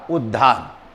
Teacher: त जो है वो द में और ये ह जो है वो ध में बदलता है, यानी दोनों बदलते हैं।